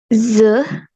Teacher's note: a palatal fricative voice sound